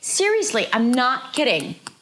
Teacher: Both the not and the kidding are stressed. Kidding is a little more stressed than not, so it's going to be a little higher in pitch.